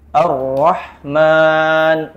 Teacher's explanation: ini keliru getarannya cuman satu kali ro ri ru bar kecuali huruf ro itu ada harakat tasydid Arrahman misalkan maka getarannya baru boleh dua kali